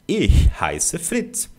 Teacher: Você vai fazer o CH da palavra cachorro, né? Que é o chiado, o sh, só que não com a língua solta. Você vai travar ela atrás dos dentes de baixo, tá? Ó, atrás desses dentes aqui.